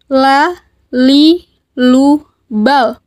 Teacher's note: Keluar dengan menyentuhkan lidah terdekat dengan langit-langit bagian depan. La. Posisinya berada di depan huruf ro. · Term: huruf lam